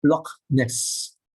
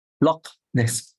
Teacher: It's a very hard, strong H. It is a guttural sound. Pronounced from the back of the throat. So is it? And so you find that it is written sometimes as KH.